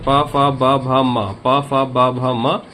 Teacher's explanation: प वर्ग का उच्चारण ओष्ठ से